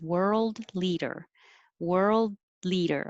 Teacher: i can hold it there at the d and go get ready for the l because it's made in the same place